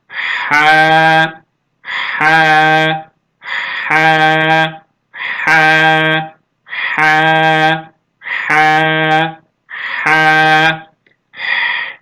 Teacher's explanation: kalın olan kırmızıyla ifade edilen kalın olan harftir bu ha harfi boğazın ortasından boğazımızı hafiften sıkıyoruz ince bir şekilde ince bir harf olarak telaffuz ediyoruz he he he he he sesi gelmesi gerekiyor diğer bir harfimiz